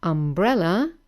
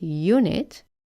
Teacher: the letter u has a vowel sound ah and therefore it's an umbrella but when we have the word unit the letter u here starts with the sound ye and therefore we need to say a unit now there are